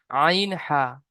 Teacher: 2 নম্বর মাখরাজ, হলকের বা কণ্ঠনালী মাঝখান হতে উচ্চারিত হয় আইন হা